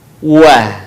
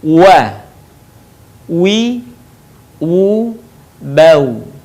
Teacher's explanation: Diucapkan dengan indhimamus syafatain atau mengumpulkan dua bibir kita. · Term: huruf wa atau wawu